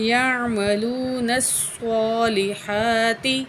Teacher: ہا کو پر کھڑی زبر ہے ایک الف کے برابر کھینچ کے پڑھیں گے